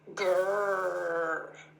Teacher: But it doesn't touch anything. And with my teeth gritted, and my tongue curled, and not touching anything, I use my vocal cords. In America, that sounds like a growl, a dog or a tiger.